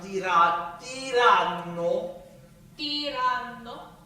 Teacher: So make sure you're pronouncing tiranno, right? And then doubling and spending a little bit more time on the double consonant. And you can even that's a nasal consonant, so you can also pitch it when we get on the pitches.